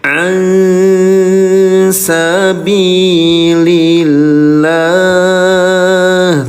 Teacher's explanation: Nun sukun bertemu dengan huruf sin, samarkan bunyi nun sukunnya ya.